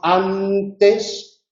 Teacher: Y si decimos antes, la lengua está en los dientes, antes. Si la consonante es velar y decimos Ankara, capital de Turquía, entonces la lengua no toca los alveolos, sino que está hacia atrás, Ankara. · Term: dental